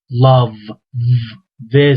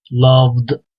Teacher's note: yani D sesini v ile D'yi birleştiriyoruz